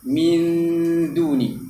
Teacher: Contohnya min du ni, huruf dal tu, ketika gunnah tu, lidah dah kena letak dekat makhraj huruf dal. Min, huruf dal makhraj dia hujung lidah ditekapkan di belakang gigi atas. Ini gigi kapak kita tu, di depan, di belakang. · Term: makhraj dal